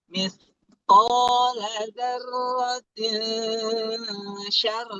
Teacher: Tapi karena dia bertemu dengan huruf ikhfa, ikhfa di mana hurufnya adalah shin, di mana shin itu makhrajul hurufnya ada di langit-langit tengah, maka dari zarrotin itu diturunin sedikit lidahnya, ujung lidahnya, zarrotin yang menempel ke langit-langit depan, diturunin zarrotin.